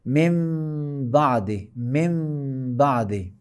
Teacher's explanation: میم کو بے کے قریب لا کے اخفا کر کے تلفظ کریں گے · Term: اقلاب